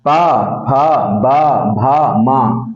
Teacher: ना ही आपकी जीभ कहीं टच होती है, ना ही आपके दांत बंद होते हैं, सिर्फ होठ मिलेंगे और अलग हो जाएंगे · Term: ओष्ठ